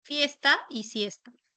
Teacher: el fonema inicial de ambas era fricativo